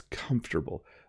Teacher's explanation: the M and F slide together